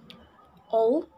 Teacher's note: voiced alveolar lateral ol